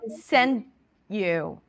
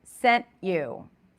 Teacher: But if we're talking about the past, I want to hear the T, which means I don't want to hear a D sound.